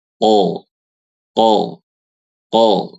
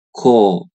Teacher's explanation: Kalau kita lihat pangkal lidahnya, kalau huruf qof itu nempelnya ke agak belakang. Kalau kaf itu agak ke tengah.